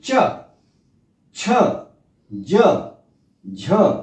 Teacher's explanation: आप देखें कि जीभ का अगला जो भाग है अगला हिस्सा है वह तालू से थोड़ा सा स्पर्श करता है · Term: च वर्ग